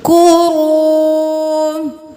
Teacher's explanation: واو مدہ ہے، ایک الف کے برابر کھینچیں